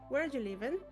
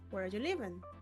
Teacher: First with a falling tone and then with a rising tone.